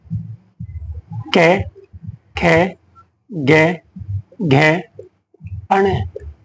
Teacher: क वर्ग कंठ से उच्चारित होता है